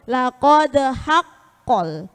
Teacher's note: qafnya tebal tapi enggak sampai kecekluk